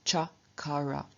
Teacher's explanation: from ker to make to do we reduplicate the k but k is a velar consonant and so it reduplicates as its palatal equivalent which is chi